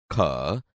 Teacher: ખ વ્યંજન કંઠમાંથી જ નીકળે છે, પરંતુ ક અને હ ભેગા મળી જતા વધુ પ્રાણવાયુની જરૂર પડે છે. એટલે ખ એ મહાપ્રાણ છે.